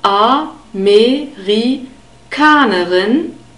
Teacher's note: the stress is on the fourth syllable